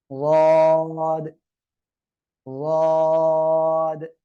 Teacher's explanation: Simple অবস্থায় আমার মুখ এখন বন্ধ রয়েছে, এই বন্ধ থাকা অবস্থায় দেখেন জিহ্বার গোড়ার দুই পাশ, বাম পাশ ডান পাশ মাড়ির সাথে লেগে আছে। এই অবস্থায় আপনাকে উচ্চারণ করতে হবে ওয়াদ ওয়াদ।